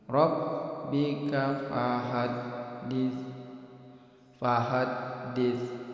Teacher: makhraj huruf sa itu pada ujung lidah. Ini bertemu dengan ujung dua gigi seri bagian atas